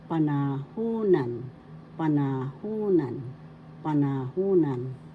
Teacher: The third syllable has the accent, so you pronounce this or bigkas panahunan.